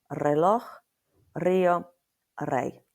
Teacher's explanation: At the beginning of a word, it's a rolled and harder R like a double R. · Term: rolled R